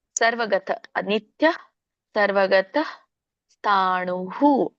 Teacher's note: ನಿತ್ಯಹ ಅನ್ನೋಂಗಿಲ್ಲ ಅಲ್ಲಿನು ಕೂಡ ಅಲ್ಪ ಪ್ರಮಾಣದಲ್ಲಿ ಹ ಹೇಳಿ